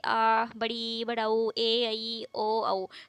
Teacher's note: द्वि मात्रिक स्वर में क्या होता है इनके उच्चारण में जो लघु स्वर है उससे दोगुना समय लगता है जैसे कि आ बड़ी ई बड़ा ऊ ए ई ओ औ